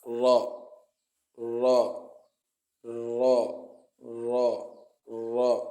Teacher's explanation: It is pronounced from the top part of the tip of the tongue when it hits the gum behind the upper incisors.